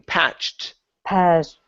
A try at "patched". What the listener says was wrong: So you're skipping over the CH.